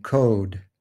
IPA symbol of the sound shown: o